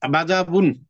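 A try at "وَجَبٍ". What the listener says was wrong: ওয়াজা বিন, ওয়াজা বিন, বাজা না, ওয়াজা বিন। হ্যাঁ, জিম, এটা জিম। বিন।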